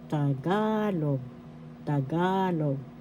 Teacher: First syllable ta, second syllable ga, third syllable log. Second syllable has the accent